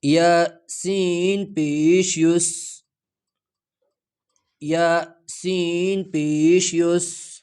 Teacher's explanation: یہاں سین میں سٹی کی آواز کو پیدا کر کے ادا ہو جاتا ہے۔